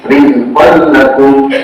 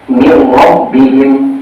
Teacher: meleburkan nun sukun ke huruf berikutnya tanpa gunnah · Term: idgham bila gunnah